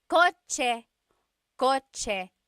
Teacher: The ch sound is a TS combination.